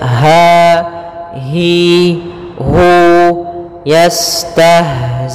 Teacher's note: Kemudian dia sifat ha yaitu sifat rokhawah juga, dan dia makhrajnya huruf ha kita keluarkan dari pangkal tenggorokan kita, pangkal tenggorokan